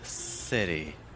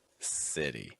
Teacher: city ends on this E sound, but it starts with an I sound, the short I.